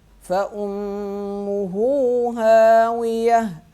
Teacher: میم پہ غنہ کریں گے، فَأُمُّهُ ہا کو ایک الف کے برابر کھینچیں گے